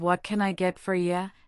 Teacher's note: The barista's voice goes up at the end of what can I get for you? Indicating a question. Listen for that musicality. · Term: intonation